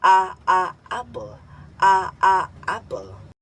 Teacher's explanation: Binibigkas ng mababa ang posisyon ng dila at sentral ang bahagi ng dila na ginagamit. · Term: Patinig a